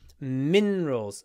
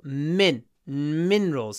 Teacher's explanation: minerals stress on the first syllable